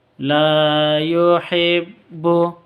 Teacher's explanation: la panjang dua harakat Alif diawali dengan fathah